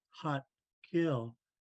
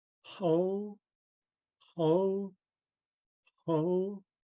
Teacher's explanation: This one's can be a little bit more gruffer or more gruff. You constrict the throat above the voice box, producing a gruff, raspy H sound. But sometimes it's relaxed, like when we say hot kill. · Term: underlying X